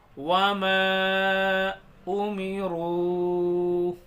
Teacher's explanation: میم کے اوپر مد ہے، اس کو بھی زیادہ کھینچیں گے 4 الف کے برابر